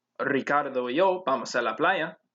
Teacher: there is an r in the initial position so you would roll the r in ricardo